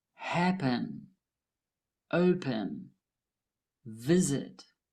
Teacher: The first syllables of these words are stressed.